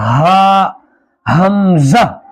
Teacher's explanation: हा, गले के बिल्कुल आखिरी हिस्से से अदा किया जाएगा। हा, हमजा, दोनों हा भी और हमजा भी गले के आखिर से अदा किया जाएगा